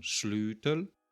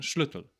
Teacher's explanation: some villages dragging the vowel out and saying slutel, and some keeping the vowel short, saying schlutel, for Old Saxon schlutil, that is, key.